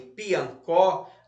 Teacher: se a sílaba tônica é a última como em Piancó a palavra é oxítona